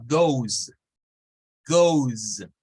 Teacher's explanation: O que es, digamos, son verbos que solo tienen la O como vocal y no hay más que una consonante, se le agrega la ES. Entonces usamos goes, goes. Realmente en ese caso la E no suena.